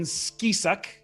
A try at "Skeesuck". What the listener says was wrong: Skeesuck, pronounced with a Z.